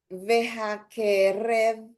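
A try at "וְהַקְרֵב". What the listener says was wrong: The only little thing is that shva right there. Audible or silent? Under the kuf. Okay, because there's a short vowel before it's silent. Vehakrev.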